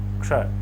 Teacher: आधा क बोले, षटकोण मूर्धन्य स बोले, क्षय, सही उच्चारण आएगा।